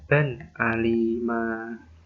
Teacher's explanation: Jadi nun sukun bertemu dengan hamzah, jadi bacaannya harus jelas.